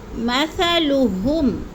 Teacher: ہم پہ غنہ نہیں کرنا کیونکہ ادھر اظہار شفوی ہے